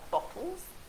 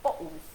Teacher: So famously, Londoners have a glottal stop where they don't pronounce a double T.